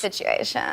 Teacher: On a aussi ce qu'on appelle le vocal fry, qui est cette espèce de grésillement des cordes vocales quand elles vibrent à très basse fréquence